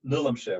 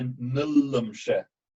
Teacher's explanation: So nillumshe, here you have to be careful, because think of what the ordinal form of 4 was. That was nillumshe with a single L. But here we have the nillumshe with a geminate L.